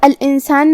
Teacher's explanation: سین حروف الاخفاء میں سے ہے اور اخفاء کا معنی ہے چھپا دینا، تو ہم یہاں نون ساکن کو چھپاتے ہوئے اور غنہ کے ساتھ یہ حکم کو ادا کریں گے. الانسانی آخری میں نون کے نیچے زیر ہے، ہمیں نون کو ظاہر کرنا ہے اور اسے زیر سے پڑھیں گے.